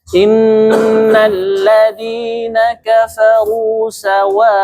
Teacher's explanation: Sawa harus 4 harokat, jangan kurang.